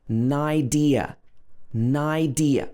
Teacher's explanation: n and i connect together because this is a consonant plus a vowel so naidir so it sounds almost like an idea an idea